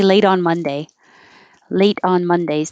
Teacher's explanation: this t is now changing to a d because it's between two vowels